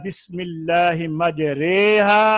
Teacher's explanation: अब सीधा खड़ा होना वो अलिफ की आवाज है, बिल्कुल नीचे चला जाना आवाज को ले जाना, जैसे बिही, ये या की आवाज है, और इन दोनों को दरमियान जो है बा और बी का, अलिफ को या की तरफ, जबर को जेर की तरफ माइल करना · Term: इमाला